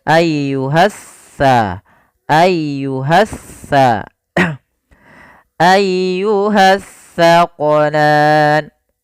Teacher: Alif lam yang dia tertulis tapi tidak dibaca lamnya, sehingga langsung diidghamkan ke huruf setelahnya. Jadi seakan-akan huruf sin-nya, huruf sa ini double, sa-nya dua. · kalau sa, ujung lidah kita wajib menempel dengan gigi seri depan, sedangkan sin dia di tengah-tengah lidah. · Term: alif lam syamsiyah